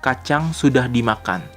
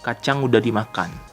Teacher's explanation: the only difference is that sudah becomes udah